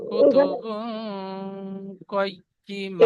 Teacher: তানবিনের আওয়াজকে নাকে তুলে একালি গুণনা সহ পড়তে হবে। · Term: ইকফা